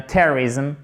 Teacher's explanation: Faites bien l'accent tonique sur la première syllabe.